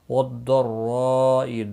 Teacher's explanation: ضاد مستعلیہ ہے، پر پڑھا جائے گا، را بھی زبر کی وجہ سے پر پڑھا جائے گا، مد متصل بھی ہے، 4 الف کے برابر کھینچ کر بھی پڑھیں گے۔